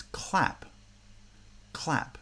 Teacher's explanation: clap clap you can almost see at the same time that the tongue at the back of the mouth is touching to make a k the front of the tongue is in position for the l so the two sounds are pronounced at the same time but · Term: onset cluster